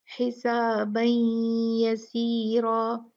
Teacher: यहाँ पर या है तो यहाँ कैसे पढ़ेंगे, हिसाबन यसीरा, दो काउंट गुन्ना करते हुए हम यहाँ पर जो है वो तनवीन को या से मिला देंगे, और ये कहलाता है इदगाम बिगुन्ना नाकस।